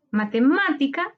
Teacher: Su sílaba tónica está en ma, antepenúltima sílaba. Se tilda porque todas las esdrújulas se tildan. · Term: palabra esdrújula